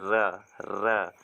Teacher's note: रा को हम लोग कहते हैं प्रकंपित या लुंठित वर्ण, क्योंकि रा का जब हम उच्चारण करते हैं ना तो जबान हमारी रा यानी हमारी क्या करती है, जबान हमारी जो है ना कंपन करती है, तो इसको बोलते हैं प्रकंपित या लुंठित वर्ण।